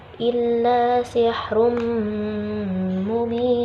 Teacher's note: Illa sihrum mubin, ada dhammah tain bertemu huruf mim. Nah, dhammah tain bertemu huruf mim adalah bacaan idgham bi gunnah, karena dengung, bacanya dengung